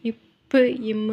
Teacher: மேல் இதழும் கீழ் இதழும் வந்து சேர்ந்து தான் வந்து இப்பு இம்மு ரெண்டுமே வந்து உருவாகுது.